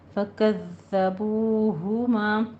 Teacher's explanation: پڑھنا ہے، لیکن تشدید ہے، 2 بار ادا کرنا ہے، فَكَذَّبُوهُمَا، بو واو مدہ کو دونوں ہونٹوں کو گول کریں اور 2 کاؤنٹ کرنا ہے